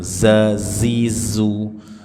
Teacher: Dibaca dengan saofir desisan. Jangan dibaca mirip sin.